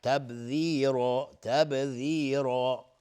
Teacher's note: بای بعدی تبذیرا با قلقله میخواد